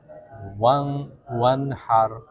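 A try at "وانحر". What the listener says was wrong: Rohnya tebal. Hanya tipis.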